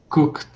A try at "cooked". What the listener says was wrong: Agora só coloca o T. Cooked.